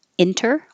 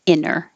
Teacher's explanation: you can say with the T enter or without the T inner